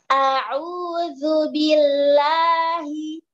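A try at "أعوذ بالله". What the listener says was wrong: Jangan naik. La, nada naik, nada turun. Tapi tetap power walaupun nada rendah. nanti powerkan lagi depan mulut, tapi turun seperti itu. Itu masih agak lemah di lamnya. Keluar depan mulut, tapi rendah seperti itu.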